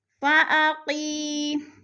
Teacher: یا ساکن سے پہلے قاف کے نیچے زیر ہے تو یا مدہ، یا مدہ کو ہم نے 1 الف 2 حرکات کے برابر لمبا کر کے پڑھنا ہے۔